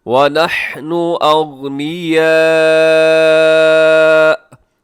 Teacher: یہاں وقف کریں گے حمزہ کے اوپر، اور حمزہ پہ وقف جب ہوتا ہے تو اس کو ایک جھٹکے کے ساتھ ہم نے کیا کرنا ہوتا ہے، رکنا ہوتا ہے